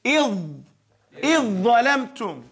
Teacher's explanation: Here the ظَ is eats up the ذَل So it's going to say, إِذْ ظَلَمْتُمْ And the ذَل is not pronounced.